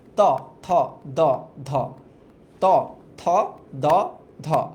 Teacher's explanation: জিভের ডগা তোমার উপরের পাটি দাঁতের সাথে বাড়ি খায়। দেখো ত, দেখো ত যখন উচ্চারণ করো উপরের পাটি দাঁতের সাথে কিন্তু বাড়ি খায়। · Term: দন্ত